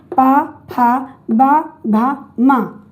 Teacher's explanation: ये ओठ से बोला जा रहा है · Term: प वर्ग